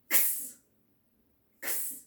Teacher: X borrows the K sound of K and the S sound of S, and you put those two sounds together really fast